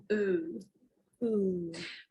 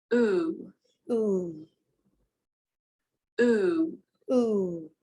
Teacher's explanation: It is called the closed back rounded vowel. To make this sound, your tongue is high in the mouth and at the back.